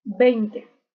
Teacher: es un poco omitida esta t no se pronuncia Si se quiere pronunciar se pronuncia muy suavemente no tan fuerte como la de inicio